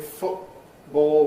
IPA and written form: ˈfʊʔbɔːo (football)